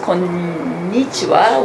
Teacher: invariably becomes konnichiwa with an accent on the second syllable